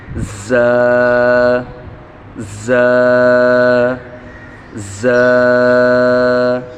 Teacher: زا کو ہم پڑھتے وقت دانت بند کر کے سختی کے ساتھ سیٹی کی آواز نکال کے پڑھیں گے اور ایک الف کے برابر کھینچ کر پڑھیں گے.